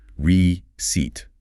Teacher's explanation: The C sounds exactly like an S. And the EI combination stretches out into a long E sound.